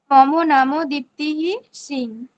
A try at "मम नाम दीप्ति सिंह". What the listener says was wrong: ঠিক, এরকম নয়, দীপ্তিহি এখানে মাঝে বিসর্গ হয়ে গেল।